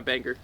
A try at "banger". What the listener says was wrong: You emphasize the G. It's not like you don't say banger, you say banger. Which I don't think is grammatically incorrect.